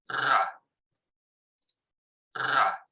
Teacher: ahí tenemos una vibración de la úvula es una vibrantebular sonora y ven como se ven las columnitas